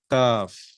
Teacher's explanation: زبان کا جو بیچ کا حصہ ہے ہمارے منہ میں، وہ اوپر جا کر تالو کو لگ رہا ہے